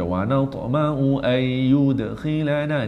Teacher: ta ni qalqalah juga, tapi jangan bunyi kuat pasal di tengah bacaan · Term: qalqalah kecil